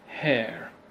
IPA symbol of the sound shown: eə